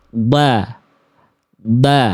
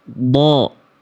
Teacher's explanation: Huruf tebal vokal A-nya gemuk karena angkat pangkal lidah.